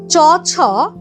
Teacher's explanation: চ ছ মানে তালব্য ধ্বনি। দেখো তোমার জীবটা তালুকে ঠেকাচ্ছে।